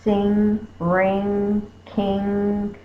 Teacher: my tongue is to the back it's making the sound NG sound